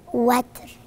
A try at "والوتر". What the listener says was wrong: مش وتر. وتر. يبقى انا رققت الراء، والراء هنا حكمها انها التفخيم، يبقى والوتر.